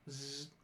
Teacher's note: It's up in the front. That's buzzing by the alveolar ridge behind your front teeth. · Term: Voiced alveolar fricative